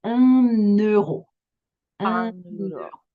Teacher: we're going to make un and euro not have a pause in between, because the N can kind of flow into the next word that starts with a vowel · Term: liaison